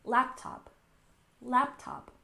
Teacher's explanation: next we have laptop we stressed the first syllable